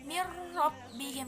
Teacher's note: Contohnya mirrabbihim, nah itu bertemu dengan huruf ro, jadi bacanya mirrabbihim, dia nggak ada berdengung. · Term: idgham bila gunnah